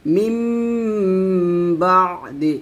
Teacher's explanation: এখানে মিম বলতে হবে দুই ঠুট মিল করে গুন্নাটা করতে হবে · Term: ইকলাব গুন্না